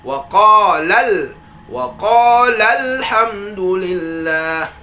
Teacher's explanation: dengan menabarkan atau meninggikan intonasi kata lam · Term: an-nabar